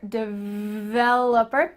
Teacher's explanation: make sure that when you pronounce this that v has some vibration here